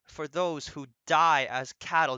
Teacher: do you see how died lands on a stressed syllable